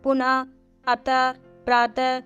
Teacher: विसर्ग अहा को विसर्ग कहा जाता है उसका उच्चारण हा की भाति होता है